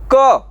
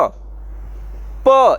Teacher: श, प, लेकिन प का जब आप उच्चारण कर रहे होते हैं तो आपको महसूस होगा कि प का उच्चारण करते समय आप दोनों ओठों का इस्तेमाल कर रहे हैं, इसलिए प जो है वो ओष्ठ व्यंजन है।